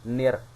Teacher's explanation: Nah, jadi di sini adalah memasukkan bunyi huruf nun kepada huruf ro, seakan-akan alif lamnya tidak terbaca, ya, seakan-akan alif lamnya tidak terbaca, nir, padahal ada di tengah-tengahnya, ya, itu. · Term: idgham